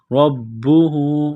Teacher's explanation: تو با کو دبانا ہے، سختی کرنی ہے ، رَبُّهُ، را با زبر رب، با پیش بو، ربو ہا